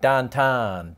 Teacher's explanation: people from Pittsburgh pronounce the vowel sound in town like tan